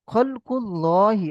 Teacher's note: আল্লাহ লাম মুশাদ্দা পূর্বে পেশ এসছে আল্লাহ লাম মুশাদ পে পেশ এসছে তাই আল্লাহ লামকে পুর অর্থাৎ ল করে পড়তে হবে